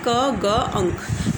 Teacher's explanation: Produce by raising the back of the tongue to the soft palate. ये soft palate है, तो soft palate की तरफ हमारी टंग की जो बैक है वो रेज होती है।